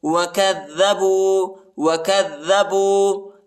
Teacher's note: کاف کو دال کے ساتھ ملانا ہے، اور دال کو جو ہے شدت کے ساتھ، سختی کے ساتھ پڑھنا ہے